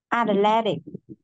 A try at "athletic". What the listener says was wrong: Hơi bị dư âm tiết một chút. Em nghe tới 4 âm tiết lận. Đọc lại lần nữa cho em 3 âm tiết thử nè.